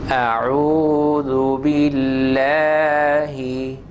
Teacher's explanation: lam of Allah, that is sharp here because of the kasra of ba